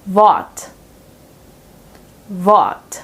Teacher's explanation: Since the R is placed right before a consonant, we pronounce it with the silent R here.